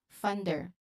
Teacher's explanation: making sure both the N and D are distinct but smoothly linked